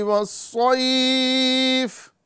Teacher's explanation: صاد ہے اس کو ہم پور کر کے پڑھیں گے